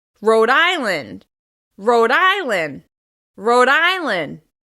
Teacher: the stress will be in the second word. In this case, it's on the first syllable.